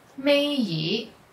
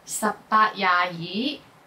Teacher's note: when 二 is the last character in certain words, it's pronounced with the second tone instead of the sixth tone